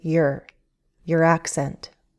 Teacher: your is reduced, it's not stressed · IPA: /yɚ/